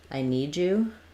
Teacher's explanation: them together need you need you where this you'll hear sometimes it ends up sounding a little bit like a j sound